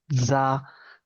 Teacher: es un sonido sonoro, ¿no? Es una S sonorizada.